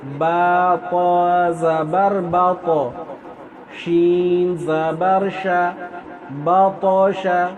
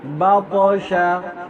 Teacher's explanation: قلقلہ ہے، یعنی آواز آپ کو لوٹ کر آئے گی